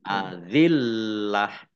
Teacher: Azillah lamnya dibaca double ya, ada tasdidnya. Kemudian tak marbutoh dhammah tanwin karena dibaca waqaf maka dibaca hak sukun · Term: wakof